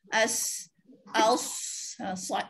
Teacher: Siulan ni bila kita sebut macam siulan lah. Macam kita bersiul. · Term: safir